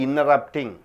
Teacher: After NT comes, T should not be pronounced.